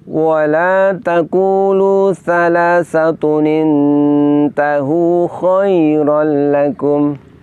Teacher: Maka apabila terdapat tanwin bertemu dengan hamzah wasol lalu huruf sukun, supaya bisa terbaca, maka tanwinnya harus diganti dengan nun iwad, dan nun iwad selamanya berharokat kasroh